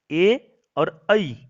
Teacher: ए और ऐ इन दोनों का उच्चारण स्थान कंठ तालु होगा। ए का उच्चारण स्थान भी कंठ और तालु, ऐ का उच्चारण स्थान भी कंठ और तालु ही होगा।